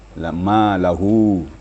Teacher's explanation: hu-nya panjang ya. Mad silah qasirah.